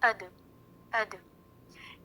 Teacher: یعنی جب زبان مخرج پر لگ کر ہٹے تو اس کے ایکو کی, اس کی گونج کی تھوڑی سی آواز سنائی دے. اب گونج کی آواز اتنی زیادہ بھی نہ ہو کہ اد کے بجائے ادا ہو جائے. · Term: قلقلہ